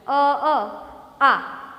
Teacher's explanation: તો હવે અહીંયા બે સ્વર સંયુક્ત થયા અને પછી તમે બે વખત અ બોલો ને ત્યારે તમે બે વખત અ બોલવામાં જેટલી વાર લાગે ને એટલી વાર તમને આ એક વખત બોલવામાં લાગે. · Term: સંયુક્ત સ્વર